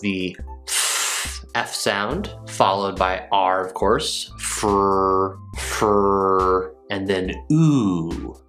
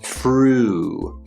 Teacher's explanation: we have the F sound, followed by R, of course, fr, and then oo, the long oo sound